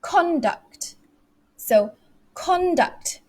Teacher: Do you see it? When I say conduct, I made my voice louder, higher pitched, and slow on that first stress.